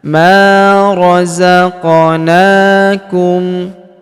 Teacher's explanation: Huruf na kita panjangkan dua harakat karena alif kecil di atasnya.